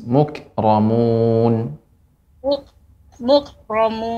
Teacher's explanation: Adapun Kaf bukan huruf Qalqalah jadi sifatnya adalah Hames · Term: Kaf yang sukun, kaf yang sukun